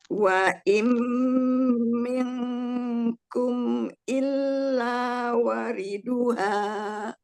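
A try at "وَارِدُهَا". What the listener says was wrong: Waridu, wanya panjang. Illa wariduha.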